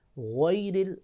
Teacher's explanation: غین کو موٹا پڑھیں گے کیونکہ یہ ابتدائی حلق سے ادا ہوتا ہے